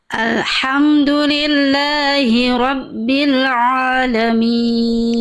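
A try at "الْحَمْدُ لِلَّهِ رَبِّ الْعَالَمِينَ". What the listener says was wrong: Sip, tinggal di ain dengan ain huruf tipis huruf tebal. Jangan tapi ringankan pelafalnya. Alhamdulillahi rabbil alamin.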